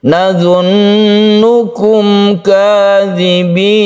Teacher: idhar syafawi, mim bertemu dengan kaf tidak berdengung. Nazunnukum kadzibin, ditutup dengan mad aid li sukun yang panjangnya 1, 2 atau 3 alif.